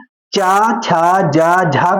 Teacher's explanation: च छ ज झा को स्पर्श संघर्षी व्यंजन कहते हैं